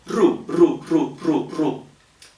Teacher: Completely frontal, because U is so frontal that R has to come forward.